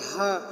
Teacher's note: الفجر، تو یہاں پر ہیا میں ہا سینے سے ادا ہوگی، حلق کے آخری حصے سے جو سینے کی طرف ہے وہاں سے ہا ادا ہوگی